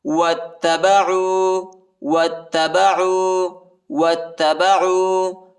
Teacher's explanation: واتبعوا، وہ کو تا کے ساتھ ملائیں گے، الف نہیں پڑھا جاتا، الف کے اوپر حرکت نہیں ہے، اور تا کو شدت کے ساتھ سختی کے ساتھ پڑھیں گے